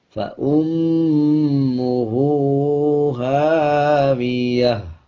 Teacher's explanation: اور آخر میں تا کے اوپر 2 پیش ہیں، دونوں پیش کو سائلنٹ کر دیں گے. وقف کرتے ہوئے تا کو ہا میں تبدیل کر دیں گے اور ہا کی آدھی آواز کو نکالا جائے گا. اب جیسے بغیر وقف کے ہم یوں پڑھیں گے فَأُمُّهُ هَاوِيَةٌ، اور جب وقف کریں گے یعنی آیت کمپلیٹ کریں گے فَأُمُّهُ هَاوِيَةٌ.